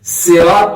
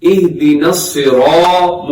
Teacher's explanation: صاد ہمیشہ موٹا پڑھا جاتا ہے، منہ بھر کے موٹا کر کے پڑھنا ہے۔ سرات نہیں پڑھنا، سرات سین کے ساتھ ہو جائے گا، سین باریک ہوتا ہے۔